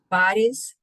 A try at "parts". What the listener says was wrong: Not party, parts.